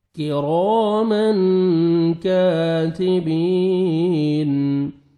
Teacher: کی کاف کو باریک پڑھنا ہے, را کو مرزبر ہے, را کو موٹا کر کے پڑھنا ہے, اور الف مد ہے, 1 سیکنڈ را کو کھینچنا بھی ہے.